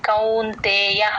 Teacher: ఔకారం ఎప్పుడు వచ్చినా సరే మీ నోరు ఇలా రౌండ్ గా అవుతుంది అప్పుడే కరెక్ట్ గా వినిపిస్తుంది కౌంతేయ అంతే య కి దీర్ఘం పెట్టొద్దు కౌంతేయ అని ట్యూన్ కోసం కౌంతేయ